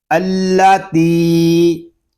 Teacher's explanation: یہاں تا کو ہم ایک الف تک کھینچ کر پڑھیں گے کیونکہ یہاں پہ یا مدہ ہو رہا ہے